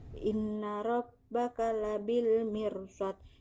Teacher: guna sebab nun bertanda tasjid dan cara membacanya dengan dengung serta ditahan 3 harokat